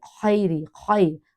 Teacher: لین کو سٹریچ نہیں کرتے، کھینچتے نہیں، لمبا نہیں کرتے